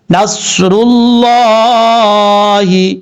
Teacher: لفظ اللہ ہے، یہ لفظ اللہ سے پہلے پیش ہو یا زبر ہو تو لفظ اللہ پر پڑھا جاتا ہے. یہاں پر لفظ اللہ سے پہلے پیش ہے، اس لیے لفظ اللہ کو پر پڑھا جائے گا